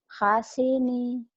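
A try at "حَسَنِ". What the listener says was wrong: hasani, Bu. Cuman sedikit ya, salah baris, tapi nanti artinya jauh, bunyinya jauh.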